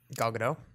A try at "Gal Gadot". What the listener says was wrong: have to pronounce the T. not, not like the French would pronounce it.